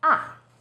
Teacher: fourth tone starts High then Falls sharply